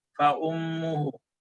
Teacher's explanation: ketika tasydid diberikan juga haknya gunnah 2 harokat kata Syekh